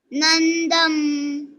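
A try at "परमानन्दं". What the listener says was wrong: नंदंग, यहाँ पे भी गंगा का ग आता है, नंदंग। ध नहीं है, द है, दादा का द है। देवकी परमानंदं,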